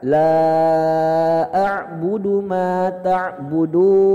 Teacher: Ain Pak, ain, huruf ain. Ain itu di tenggorokan tengah Pak ya.